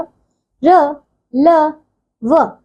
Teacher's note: इन व्यंजनों का उच्चारण करते समय जीभ व मुख के किसी भी भाग को पूरी तरह नहीं छूती तथा इनके उच्चारण में श्वास का अवरोध बहुत कम होता है।